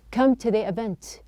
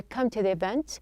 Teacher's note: the T is pronounced as a flap.